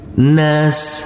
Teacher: huruf Sin yang bersukun ini tidak boleh dipantulkan karena ini adalah bukan bacaan Qalqalah